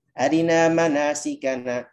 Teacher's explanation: Jadi bukan arina, tapi arina manasikana. Ro kasrohnya hanya berharokat 1/3 saja. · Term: ikhtilas